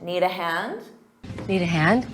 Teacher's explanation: Now, if you're offering help to someone else, you can say, need a hand. But notice you do the rising intonation to make it sound like a question